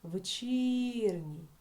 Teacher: ми бачимо що наголос падає на звук І